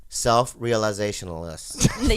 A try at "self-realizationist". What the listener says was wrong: You're adding too much, babe. You're adding a list instead of ist.